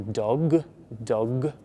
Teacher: You need to vibrate and use your vocal cords to say a G